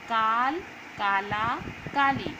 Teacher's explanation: यहाँ पे जो शब्द हम लोग बोल रहे हैं काल, काला, काली, तो यहाँ दीर्घ स्वर लग रहा है यानी कि समय ज़्यादा लग रहा है